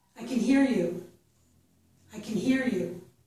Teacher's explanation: in these sentences we are going to reduce the word can. We're going to reduce that vowel, and we're going to stress the verb.